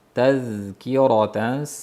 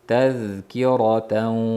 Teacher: Tazkirataza bo'lib Taza emas, tazkiratan. Zalda ham roxava bor, sirg'alinchlik bor.